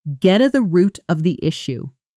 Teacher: Now say it at natural interview speed, where get to the blends together almost like one word.